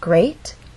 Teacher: That means this is the point where our voice will go up. Great has one syllable, so we only have one syllable to make our voice glide up. Great. And we're using rising intonation because this question requires a yes or no answer.